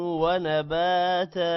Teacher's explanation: ونباتا با کے بعد الف ہے لمبا ہوگا تا کے بعد بھی الف ہے اس کو بھی لمبا کرنا ہے